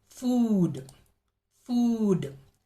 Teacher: the tongue receives long tension long tightness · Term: long ooh sound